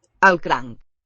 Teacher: Don't hear a K at the end.